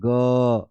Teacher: घोष वर्न में कंपन होगा